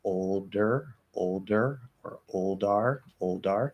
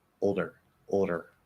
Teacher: Flapping D after ol is a little bit difficult, but it does happen.